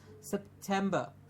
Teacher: remember the T in the middle to give us a frictional T sound